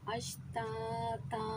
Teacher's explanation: اب ایک زبر رہ گیا، الف خالی ہو گیا، پھر الف خالی سے پہلے ایک زبر ہے تو الف مدہ بنا، اسے ہم نے ایک الف کی مقدار کھینچنا ہے، اس وجہ سے ہم اسے کھینچ رہے ہیں۔